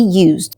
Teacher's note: The S sounds like a Z because it is in the middle between 2 vowels